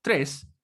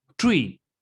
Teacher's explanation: las THs en inglés, se pronuncian como si nosotros pusiéramos la lengua entre medio de los dientes